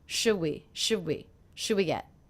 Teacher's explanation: one of the things I noticed is I'm dropping the D sound